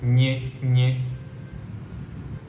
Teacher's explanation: It's a very nasal ni sound.